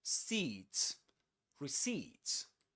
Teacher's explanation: The accented syllable is the last one.